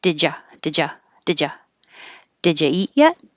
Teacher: because the d and the y together make a j and a u can always change to uh so didja did